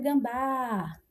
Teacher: Perceba que eu puxo mais a última sílaba. A última sílaba aqui é forte e é terminada na vogal A. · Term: oxítono